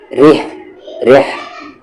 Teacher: را پر زیر ہے اسی لیے یہ را لائٹ ہوگا